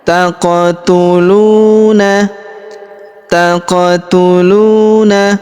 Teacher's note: Huruf qof kita pantulkan atau kita qalqalahkan karena berharakat sukun ya